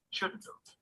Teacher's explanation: When we use these phrases in the negative, we reduce both not and have.